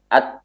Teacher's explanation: Kalau kita mendengar bunyi ketika tak sukun atau kaf sukun itu adalah bunyi dari nafas. Bukan suara makhraj.